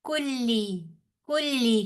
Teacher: काफ भी बारीक लाम भी बारीक, काफ पेश लाम, कुल लाम जेरली, कुल्ली, वहुआ अला कुल्ली शई।